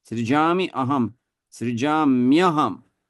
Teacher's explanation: you see what happens to the E when the next word is starting with some vowel is that E becomes, it turns into Y. So it doesn't stay Srijami Aham, but it becomes Srijamyaham, like that. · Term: Sandhi